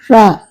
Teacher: மேலினத்தின் மைய பகுதியில் உரசுவதால் ரகரம் தோன்றுகிறது இது வல்லின ரகரமாகும்